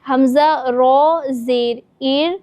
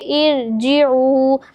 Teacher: ار باریکی سے ادا ہوگا، ترقیق کے ساتھ پڑھیں گے